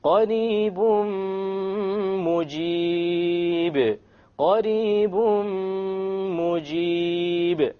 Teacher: We drop the end sound and we merge the tanween immediately onto the meme with a ghunna. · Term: idgham with ghunna